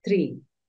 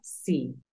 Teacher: la doble e tiene un sonido como una i, pero es un poco más alargada. Recuerda que yo te la describí como un sonido un poco más continuo.